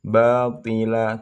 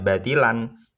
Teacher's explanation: jadi tanwinnya diganti menjadi alif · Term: mad iwat